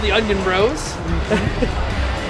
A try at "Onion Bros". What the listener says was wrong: I think you pronounced the whole word brothers.